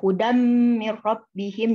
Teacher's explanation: jadi seakan-akan bunyi tanwinnya itu hilang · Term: idgham kamil